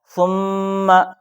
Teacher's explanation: اسی طرح یہاں میم پر تشدید آیا ہے تو رولس ہے کہ نون میم پر تشدید ہو تو غنہ کر کے پڑھنا ہے، تو یہاں غنہ ہوگا۔ ثم، ایک الف کے برابر غنہ کر کے پڑھنا ہے